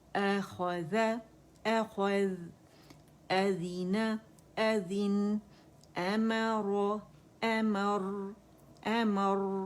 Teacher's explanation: حمزہ فتح ا باریک ہے تو ا کی آواز آئے گی اور اقص الحلق سے آئے گی. ٹھیک ہے, الجوف سے ادا نہیں کریں گے, آ نہیں آئے گی, آئے گی.